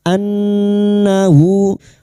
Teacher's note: Alam yarau ra fathah bertemu wau sukunakan huruf lin ya an nun yang bertasdid ghunna mustadadah. Kita dengungkan selama tiga harakat. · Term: guna musaddada